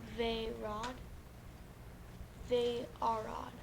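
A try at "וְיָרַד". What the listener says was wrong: Don't forget the yod there.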